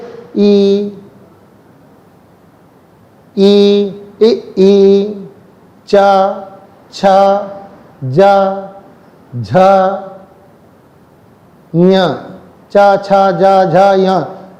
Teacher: हमारी जीभ ऊपर की ओर जा रही है, तालु से टकरा रही है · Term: तालव्य